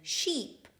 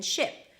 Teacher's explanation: the tense E as in sheep and the relaxed I as in ship